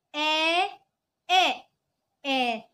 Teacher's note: The second one a go down. Okay, the sound go down, and then the last one a, the sound go up.